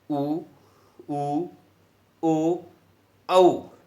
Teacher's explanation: वे स्वर वर्ण जिनका उच्चारण करते समय हमारे ओष्ठों की आकृति वृत्त के समान गोल हो जाए, रुपये के समान गोल हो जाए, रोटी के समान गोल हो जाए, या थाली के समान गोल हो जाए। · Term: वृत्ताकार स्वर